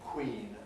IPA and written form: kwiːn (queen)